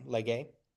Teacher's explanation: the third singular is the A sound because it's the diphthong EI, so lege. But great.